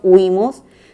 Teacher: es una palabra grave con acento en la penúltima sílaba